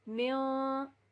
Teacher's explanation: اخفا کہتے ہیں کسی چیز کو چھپانا، خفی کرنا، چھپانا. تو ہم ناک میں جو ہے نون ساکن کی آواز کو چھپا لیں گے. اس کو ہم نہ تو ظاہر کر کے پڑھیں گے، من بھی نہیں پڑھیں گے، من بھی نہیں پڑھیں گے، مم بھی نہیں پڑھیں گے.